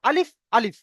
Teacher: একদমই টান হবে না, টোটালি টান হবে না, বিনা টানে পড়বো আলিফ। আলিফ আমরা অনেকে পড়ি আলিফ, না, আবার পড়ি কি আলিফ, টান দেয়া চলবে না, আলিফ আলিফ ব্যাস, এমনই আলিফ।